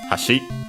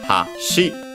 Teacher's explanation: we can actually hear it ha, shi, or low, high, low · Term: accented on the last syllable